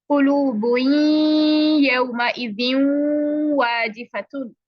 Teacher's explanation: नून को जाहिर करके नहीं पढ़ा जाता, बल्कि नून साकिना गुन्ना के साथ अगले हर्फ में दाखिल हो जाता है, और ये नून का गुन्ना होता है यहाँ पर।